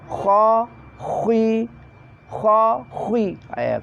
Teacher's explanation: Ketika mengucapkan kasroh pada posisi kha tetap kha mulut ke depan, moncong.